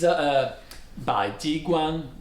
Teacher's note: So Bai is rising, and then Jiguan.